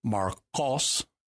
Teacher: you're pronouncing the Q towards the back of your mouth there, not the K towards the front